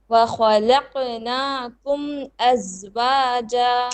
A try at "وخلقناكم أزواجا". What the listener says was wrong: You have to work on this qaf. It needs to be more heavy with the bouncing.